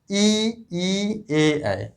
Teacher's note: ऐसे वर्ण जिनका उच्चारण करते समय हमारा जिह्वा मतलब जीभ आगे की तरफ आती है उन्हें हम अग्र स्वर कहते हैं